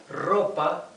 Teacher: the tongue vibrating on the teeth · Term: Spanish rough r